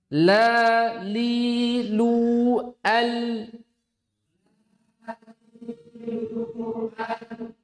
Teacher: dia memiliki sifat Bainiah. Bainiah itu pertengahan. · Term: lam